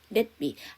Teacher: 우리나라는 두 번째 음절에 미음이 나오면 앞에 받침에 미음을 주는 자음동화가 일어나는데 영어는 자음동화가 없습니다. 그래서 의도적으로 끊어주셔야 돼요.